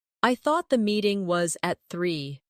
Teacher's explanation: Do you hear the soft connection between meeting and was?